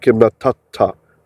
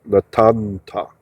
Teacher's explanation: You can hear or see natan ta in ancient Hebrew became natata. The noon, sofit, went inside the tav, and that's why there's a strong dagesh.